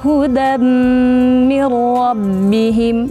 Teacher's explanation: Jadi ada kayak orang pilek itu ngirung istilahnya ya. Jadi kayak ada dengung yang keluar dari rongga hidung.